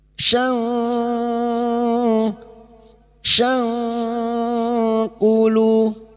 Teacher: fathah tanwin bertemu kaf ikfa hakiki, kita samarkan bunyi fathah tanwin dan mendengung selama 3 harokat